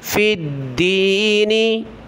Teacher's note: व इनिस तंसरूकुम फिद्दीनी, फ़ा को दाल के साथ मिलाना है, दाल के ऊपर तशदीद है, सख्ती के साथ पढ़ेंगे। फ़ा दाल ज़ेर फिद्दाल, या ज़ेर दी, फिद्दी, नून ज़ेर नी, फिद्दीनी।